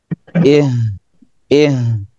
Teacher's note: Ih hanya dari pangkal tenggorokan. Kemudian dia memiliki sifat hamas dan rekhwah.